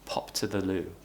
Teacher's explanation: we're not connecting our speech with this one because to begins with a t consonant, so we can't connect our speech here